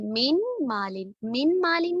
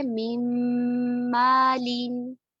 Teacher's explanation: اب ہم اس کو ایسے نہیں پڑھتے من مالن، من مالن نہیں پڑھتے، ہم جو من کا نون ساکن ہے اس کو آگے آنے والے میم متحرک میں مرج کر دیتے. ٹھیک ہے، اس طرح وہ میم متحرک جو ہے وہ مشدد بن جاتا ہے، اس کو تشدید مل جاتی ہے ادغام کے قاعدے کی وجہ سے.